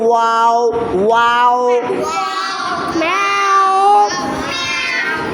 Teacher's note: আর ওয়াও দুই ঠোঁটের গোল অংশ থেকে। দুই ঠোঁটের দুই ঠোঁটকে এই দুই ঠোঁট বা সোয়ালকে গোল করে ওয়াও ওয়াও।